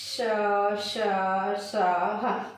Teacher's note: जब हम इसका उच्चारण करते हैं तो हमारी जो मुख की जो वायु है वह घर्षण होकर के क्या होती है, बाहर निकलती है। तो एक प्रकार की जो है वो गर्माहट का एहसास होता है, इसलिए इसे क्या कहा जाता है, ऊष्म व्यंजन कहा जाता है।